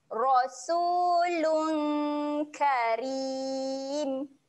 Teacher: lung ada bacaan dengung. Ah, dengung ni kita sedia nak sebut huruf kaf